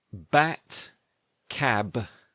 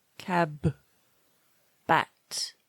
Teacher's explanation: Lips close. Then release with vocal cord vibration. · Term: plosive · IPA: /b/